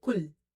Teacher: So first mistake people make in qul, they don't say it qul, they say kul. So when you say the word kul, you don't make the qaf heavy.